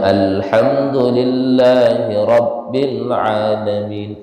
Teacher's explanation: Contohnya, alhamdulillahi rabbil alamin. Alhamdu, ha tafhim, yang letaknya itu adalah kalau di makharijul huruf letaknya di tengah tenggorokan